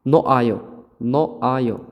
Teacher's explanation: noh ayo yozilgan, lekin h ni o'qimaysiz.